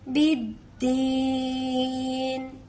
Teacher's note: या को हम खींच के अदा करेंगे। यहां से लंबा करते हुए हम नून पर वफ करेंगे। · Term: या मदद्दा